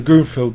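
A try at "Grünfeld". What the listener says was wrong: Grunfeld. It's Grunfeld, not Grunfield. Feld. Feld, not field.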